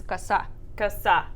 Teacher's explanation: the O sounds like an A